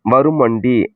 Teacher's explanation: இவ்வாறு திரியும் நகர நகர முன்னுள்ள மகரம் தன் அரை மாத்திரை அளவில் இருந்து குறைந்து கால் மாத்திரை அளவில் ஒலிக்கும். மகர ஈற்று சொல் முன் வகர எழுத்து முதல் வந்து சேரும்போது நிலைமொழி மகரம் குறைந்து ஒலிக்கும். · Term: மகர குறுக்கம்